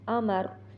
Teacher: रा को वैसे भी मोटा करना है, हालत वक्फ में भी मोटा करना है।